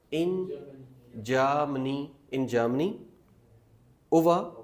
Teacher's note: जर्मनी में हमने आर की साउंड लानी ही नहीं है। इन जर्मनी, इन जर्मनी, ओवा, एंडिंग आर नहीं पढ़ना, ओवा, ओके।